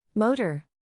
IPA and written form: ˈmoʊ.tɚ (Motor)